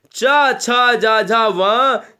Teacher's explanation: ये तालब्य कहलाते, ये तालब्य स्पर्श व्यंजन हो गए